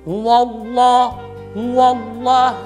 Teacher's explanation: ketika membaca huwallah ini, yaitu dia menebalkan huruf waw.